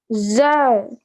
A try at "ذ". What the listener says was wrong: Not za. It's not that. It's dal.